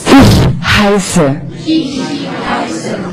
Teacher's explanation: Again, this letter is two, like two S, it's pronounced very, very sharp and unvoiced.